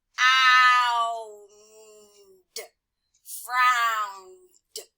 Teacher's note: this says d because the N is voiced, and so the ED is voiced.